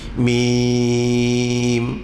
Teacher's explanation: Mim dibaca dengan 6 harakat. Dia adalah mad lazim harfi muhaffaf. Mad maknanya panjang, lazim maknanya mesti, muhaffaf maknanya senang, mudah, ringan dibaca.